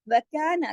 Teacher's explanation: अलिफ मद्दा दो हरकत खींचेगा, लेकिन नून जबरना एक हरकत ही पड़ा जाएगा